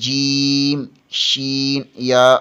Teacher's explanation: وسط زبان بالمقابل اوپر کے تالو سے لگے تو جیم، شین، یا ادا ہوتے ہیں